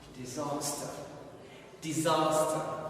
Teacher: Of course, stress is in the second syllable. It's here. Disaster.